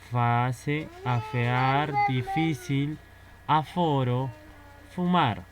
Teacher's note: Con la F, acá se va a dar un sonido labiodental.